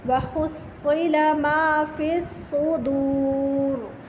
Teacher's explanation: دال نہیں موٹا کریں گے صاد کے چکر میں، یہ نہ ہو کہ صدور بنا دیں یا موٹا کر دیں، صدور۔